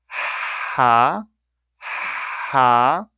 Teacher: it's a fricative, continuous breath